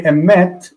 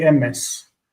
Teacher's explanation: the final tav is an S sound for them.